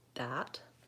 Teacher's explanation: their teeth so a word like that sounds more like that my tongue is back and pushing against my teeth instead of between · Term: error pattern